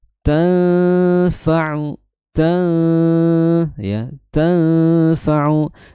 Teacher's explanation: Dibacanya dengan ditahan selama dua harakat disertai dengung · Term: ikhfa